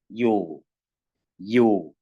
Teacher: 이를 발음하려는 입모양에 오를 발음하면요. 요가 됩니다. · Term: 이중모음